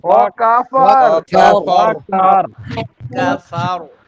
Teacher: শেষে রটা মোটা হবে শুধু